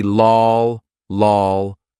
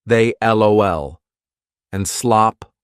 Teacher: it's going to be a dark l or a light L on its own without linking this would be dark but when it's linked it's light so we say they L and slop that's another light L